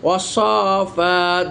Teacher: ওয়াসফাত, দেখেন এই যে আলিফ লাম লিখতে এসেছে কিন্তু উচ্চারণ হয়নি, সরাসরি সদ ধরেছে